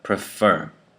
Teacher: that first E in the first syllable becomes the schwa sound